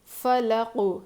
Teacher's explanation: اس قوف پہ قلقلہ ہوگا اور اس قوف کو ہم موٹا پڑھیں گے